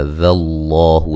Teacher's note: لفظ اللہ کو موٹا ادا کریں گے، اس سے پہلے حرف پر زبر ہے اور یہ مد اصلی ہے۔